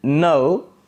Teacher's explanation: at the beginning again the lips are neutral and at the end there is lip rounding